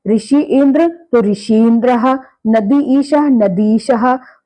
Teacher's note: दोनों तरफ समान स्वर होने के कारण एक दीर्घ ई हो गया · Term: दीर्घ संधि